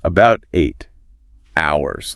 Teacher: because of the linking and maybe how the H in hours wasn't fully pronounced, the listener heard something that sounded like about Tate Towers.